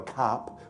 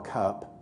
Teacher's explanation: Or the word cup, C-U-P, 50 years ago, cup, with a very open ah, and now it's more cup, with a more centralized quality.